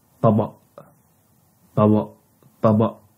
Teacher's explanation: The last sound here is glottal stop